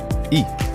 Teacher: represents a high front unrounded vowel